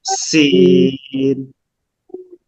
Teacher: সিন শিরশির পাতলা আওয়াজ, বাতাস বের হবে